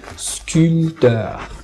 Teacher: le P, on ne le prononce pas